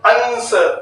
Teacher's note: तालव्य स हो, जिह्वा के तालु भाग से उच्चारण किया गया हो